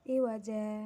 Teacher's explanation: Cara membaca mad iwad sama seperti mad tabi'i. Dalam bacaan yang asalnya iwajan, bila waqaf menjadi iwaja.